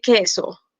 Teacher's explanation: i don't need to utter the sound of u when i want to say queso